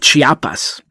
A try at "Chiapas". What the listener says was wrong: Yeah, you say a little faster. Chiapas.